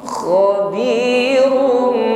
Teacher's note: Karena diawali dengan fathah. Kho tebalkan, ada bunyi dengkur pada huruf kho. Khabirum, dengungkan, bibir rapat tapi jangan ditekan terlalu kuat.